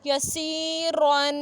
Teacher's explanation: را پہ زبر ہے تو را کو موٹا پڑھیں گے اور تنوین ہے تو غنہ کریں گے